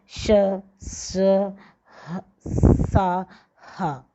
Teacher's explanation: इन व्यंजनों के उच्चारण में हवा किसी स्थान पर रगड़ खाकर बाहर निकलती हुई ऊष्मा उत्पन्न करती है, ये ऊष्म व्यंजन कहलाते हैं।